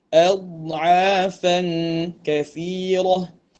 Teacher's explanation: Syiddah ni suara tertahan. Dad rakhawah dia tidak tertahan. · Dad yang bersifat rakhawah ataupun dad yang mana suaranya tidak tertahan. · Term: dad yang betul